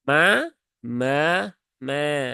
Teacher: dan Cukup dua harakat kemudian Ma ini juga dua harakat ya Ada Alif setelah fathah dan pastikan bunyinya tipis